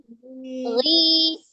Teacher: Ketika berharokat kasroh kurang ditarik rahangnya ke bawah.